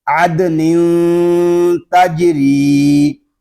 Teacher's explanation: نون دو زیر نین، عد نین، تنوین کے بعد حروف اخفا میں سے تا آ رہا ہے، ہم غنہ اس وقت کریں گے اخفا والا جب ہم تا کو پڑھ لیں گے